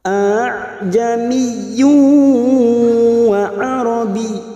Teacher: seolah terkesan seperti menyeret bunyi hamzah yang kedua · Atau dalam istilah kaidah tajwid meringankan bunyi hamzah yang kedua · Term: bacaan tashil